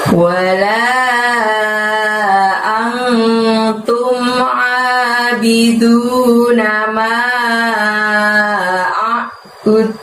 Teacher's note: Pada saat mengucapkan antum tadi angnya disamarkan ya dan ditahan 2 harokat